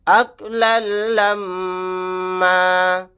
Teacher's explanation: یہاں پر آیت کرنے کی صورت میں ایک زبر کے ساتھ الف کو لگا کر پڑھیں گے، 2 زبر نہیں پڑھے جائیں گے